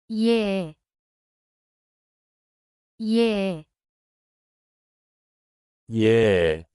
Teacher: Add a y sound before pronouncing e.